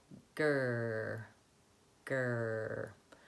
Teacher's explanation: That's the position for that back American R, tight back tongue.